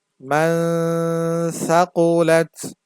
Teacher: এখানে মিম নুন জবর মান পড়া যাবে না, এখানে একটু নুনটাকে অস্পষ্ট করে রাখতে হবে, কারণ ইকফা অর্থ অস্পষ্ট করে পড়া। কারণ হচ্ছে নুন সাকিনের পরে সা আসছে, সাটা হচ্ছে ইকফার হরফ।